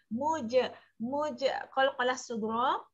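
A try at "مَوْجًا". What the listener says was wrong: Bukan muja. JE bunyi jim tu.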